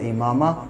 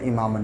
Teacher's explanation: رکیں گے تو امامہ اور ملا کے پڑھیں گے تو امامن، یعنی دونوں زبر کا یوز کریں گے